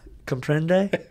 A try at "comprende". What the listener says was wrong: Comprende. Yeah, you got to roll your R's.